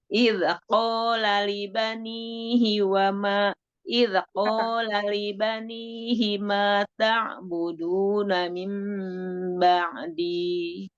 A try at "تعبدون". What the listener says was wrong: Ta'budu kurang mengalir. Ta'buduna min ba'di.